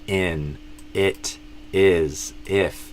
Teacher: all four of those are I, but a lot of Brazilians do E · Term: I sound